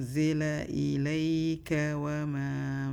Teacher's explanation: remember the za has the buzzing sound.